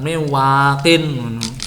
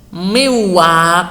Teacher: Ini nunnya posisinya adalah nun sukun, wawu diubah menjadi wawu sukun. Nun sukun diubah menjadi wawu sukun. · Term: idgham